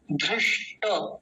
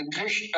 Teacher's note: ध के नीचे रिकार बना हुआ है, मूर्धन्य शकार बीच में आधा है और टकार पूरा है। धृष्ट श श, इस वाले का विशेष ध्यान रखिए।